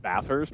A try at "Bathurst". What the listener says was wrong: Bathurst. Bathurst. You don't pronounce the H twice. Bathurst. Bathurst.